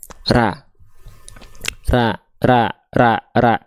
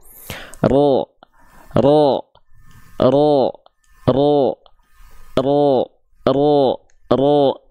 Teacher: terdengar condong pada vokal A karena pangkal lidahnya terhampar. Kalau teman-teman pangkal lidahnya nggak naik tapi keluarnya bunyi vokal O, maka itu sengaja teman-teman O kan, berarti ro, nggak begini, ro tidak monyong, ro, ya. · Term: A tipis